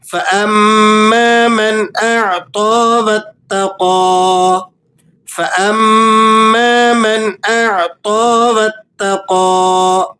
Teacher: میم مشدد ہے اور یہاں آپ نے غنہ ادا کرنا ہے۔